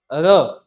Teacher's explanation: लुंठित या प्रकंपित, लुंठित जो कि लुढ़के, जो जीवा पे लुढ़कता हुआ है